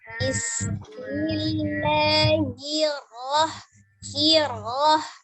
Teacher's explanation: hirnya tipis, rohnya baru tebal.